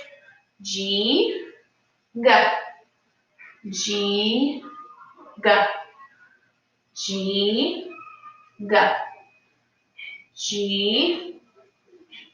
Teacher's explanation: i'm not touching my tongue up to the top just making that sound come from the back of my throat almost